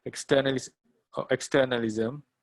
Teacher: external externalism has the stress on ter